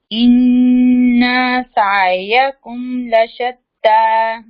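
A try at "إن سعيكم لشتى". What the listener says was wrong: ان کو لمبا نہیں کریں گے, اس کے اوپر زبر ہے بس.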